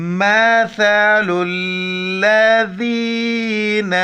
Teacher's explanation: सा के वक्त ज़ुबान बाहर निकालना है।